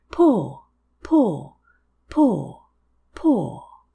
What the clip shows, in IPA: pɔːr